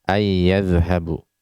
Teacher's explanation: ada nun sukun pada an bertemu dengan ya, huruf ya, yang mana kalau kita mempelajari hukum tajwid, nah ini adalah idgham bi gunnah